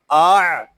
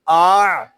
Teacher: یہاں آ جھٹکا نہیں دیں گے، جھٹکا صرف حمزہ ساکنہ میں جو ہوتا ہے